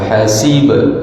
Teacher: Hasib ba ada qalqalah lantunan suara